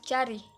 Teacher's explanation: Lalu ada palatal, yaitu bunyi yang dihasilkan oleh bagian tengah lidah yang mendekati langit-langit keras seperti pada C dalam kata cari.